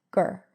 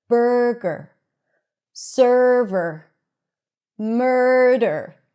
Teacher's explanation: we have the stir sound at the beginning, burr, and then we have a schwa R at the end, ger. So it's going to be shorter and softer and lower in pitch.